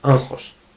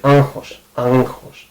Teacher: when you are talking quickly you might actually say it like νχ(nh)